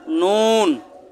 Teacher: জিহ্বার আগা উপরে তালুতে লাগিয়ে উচ্চারণ করবেন নুন।